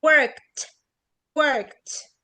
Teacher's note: فين الار؟ شبه مش موجودة.